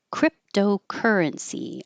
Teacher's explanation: I underlined cry because this would be secondary stress and secondary stress is longer but not higher. So currency is the primary.